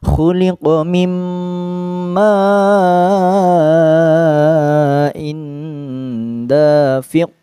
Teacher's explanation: Jadi ketika ada nun sukun bertemu dengan huruf mim, nunnya seolah-olah hilang. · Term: idgham bi gunnah